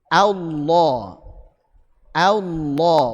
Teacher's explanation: Lam makhrajnya menyimpang ke makhraj huruf nun saat mengucapkan lam tebal. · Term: inhiraf